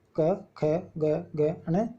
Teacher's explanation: क वर्ग वाले व्यंजन जो हैं, इनका उच्चारण स्थान होता है कंठ